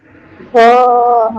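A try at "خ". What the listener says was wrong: বাংলায় বাংলায় কয়ের পরে যে খ আছে না, এই খয়ের মতো উচ্চারণ করলেই হবে। হুম। তবে এটা একটু মোটা। বাংলায় যে খ, ওইটা ওইটা একটু আ স্বা স্বাভাবিকভাবে বলা যায়। আর এইটা একটু হালকা ভিতর থেকে একটু মোটা করে উচ্চারণ করতে হবে।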